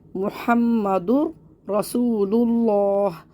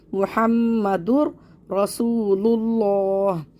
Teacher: جیسے کہ یہاں پہ مثال ہے محمد رسول اللہ، دو پیش کی تنوین کے بعد را آ رہا ہے یہاں پہ، تو یہاں پہ ہم تنوین کے را سے ملائیں گے لیکن غنہ نہیں کریں گے۔ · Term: ادغام بلا غنہ